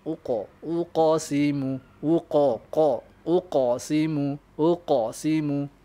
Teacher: Uqa dia ke arah fathah, dia arah fathah sikit dengan ke arah dhamma. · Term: Qalqalah